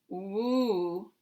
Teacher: my tongue begins down, and I say woo, it moves back, and the back goes up